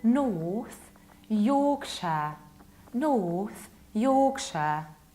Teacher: Pay attention to how much of a prolonged O I articulate.